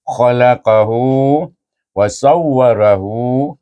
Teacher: Kemudian khalaqahu, selepas ha ni ada waw kecil, baca dengan mat silah qasirah. Dua harakat panjangnya. Khalaqahu wa sawwarahu, kalau kita sambunglah, kalau kita berhenti khalaqah, okey, sukun tak adalah, mat silah qasirah tu tak adalah, tak berlaku.